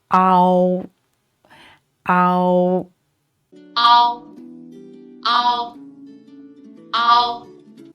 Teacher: Notice when we pronounce the compound finals, we need to slide from ah to o to form ow